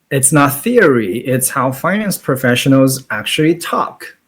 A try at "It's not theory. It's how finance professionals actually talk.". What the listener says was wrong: Too fast, actually. Um, pause. Pause after theory.